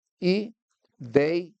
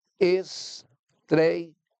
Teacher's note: essas duas palavras, elas têm ditongos, que é o que a gente chama de ditongo aberto.